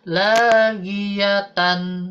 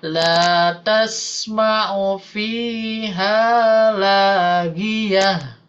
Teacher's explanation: Jangan dibaca tanwinnya, tapi sukunkan dan rubah ke suara H.